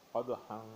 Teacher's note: دال حروف قلقلہ میں سے اور ساکن ہے، اس لیے اس پر قلقلہ کیا جائے گا